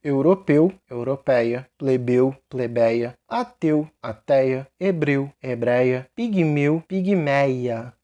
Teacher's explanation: lembrando esse Ei é aberto não é fechado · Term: ditongo aberto, vogal aberta